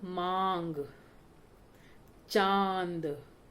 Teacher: ठीक है, चलिए अब ये अनुनासिक है, ये हम जब उसका उच्चारण करते हैं तो हमारे मुख और नाक, ठीक है, दोनों से इसकी आवाज आती है